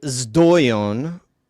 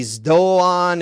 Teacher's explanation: Some people would say zdoion because there's the zeta is essentially zdeta in Attic Greek. Or if you're going with Archaic Greek, it would be z, and a lot of people just say z by default.